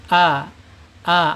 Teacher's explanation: alif ini ada di ee alhalq ya, artinya tenggorokan. Tenggorokan bawah.